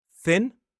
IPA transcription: θɪn